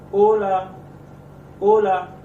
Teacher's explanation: तो ये ए से वर्ड मतलब ए वोवेल पे वर्ड हमारा खत्म हो रहा है, तो हम स्ट्रेस देंगे ओ पे